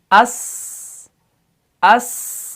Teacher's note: اب سین میں کیا ہے؟ پہلے اس کے اندر صفیر بھی ہے, یعنی اس کے اندر تھوڑی سی سیٹی ہے,